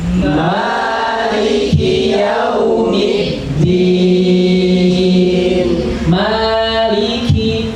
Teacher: Jadi kaf itu ada hamznya keluar